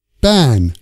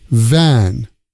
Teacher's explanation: B needs your lips together V needs your lips apart